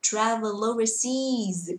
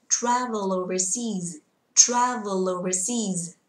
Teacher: cái từ seas sẽ đọc to hơn hẳn và cao hơn tí vì nó đang nhận trọng âm